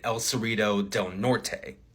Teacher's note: I hit the T hard in El Cerrito del Norte. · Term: full T